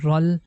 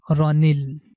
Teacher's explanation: So according to Tajweed rule, we are going to convert this sukun sign into a kasra, so then it becomes rani, and now the ni sound is going to connect with lam, it becomes ranil.